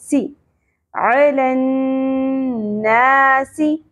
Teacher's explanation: सीन सीटी का element होगा